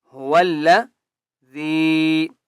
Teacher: هو والذی، ہو واو لام زبر ول، هو الذی، ذال کو ایک الف کی مقدار کھینچ کر پڑھیں گے اور ذال کو نرمی کے ساتھ پڑھیں گے